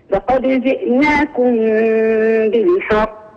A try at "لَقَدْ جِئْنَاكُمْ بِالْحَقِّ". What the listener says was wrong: فجعلت فراغا صوتيا في حرف القاف هذه يعني سكتي فلا أنطق القاف على بعضها